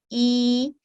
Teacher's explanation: इसी तरह आप देख रहे हैं कि या मदिया से पहले वाले हर्फ पर कसरा की अलामत होती है, जैसे अलिफ के नीचे कसरा मौजूद है और या मदिया की वजह से हम अलिफ को 2 सेकंड का वक्त देंगे